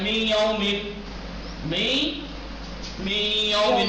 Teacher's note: نون کو یا میں ادغام کر دیا